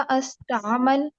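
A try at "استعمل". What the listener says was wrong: इस, हमेशा कसरा के साथ स्टार्ट करें।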